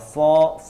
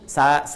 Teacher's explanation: kalau mau mengucapkan sod, seperti kita mengucapkan o, ya, o, cuma ujung lidahnya ini agak menyentuh, ya, hampir menyentuh ke gigi seri bagian bawah.